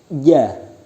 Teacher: Yang kelima jim. Makharijul hurufnya bertempat pada tengah lidah rapat dengan langit-langit.